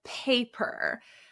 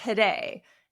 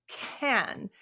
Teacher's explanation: P PP like paper or t today and K like can we have like an airflow a puff of aspiration and our tongue tends to be more forward for this pronunciation